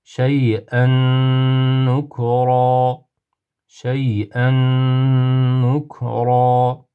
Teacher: tanvinni nunni g'unnali idom harflarda nunga kirgizib g'unali qilib o'qiymiz